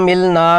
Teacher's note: غنہ کرنا ہے، خشوم سے 2 حرکات، ہونٹ بند، ناک میں جنجناہٹ، زبان ساکت ہوگی